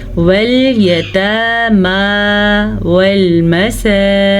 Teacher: सीन के ऊपर खड़ी ज़बर है और ये वाव मद्दा है। इन दोनों की मिक़दार सेम होती है